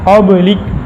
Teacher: اب دیکھیں قاف ہے، قاف متحرک ہے، قلقلہ ہے لیکن کم درجے کا ہے